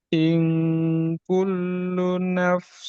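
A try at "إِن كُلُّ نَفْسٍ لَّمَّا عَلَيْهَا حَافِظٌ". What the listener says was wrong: Luna jangan luna. Agak tasdid.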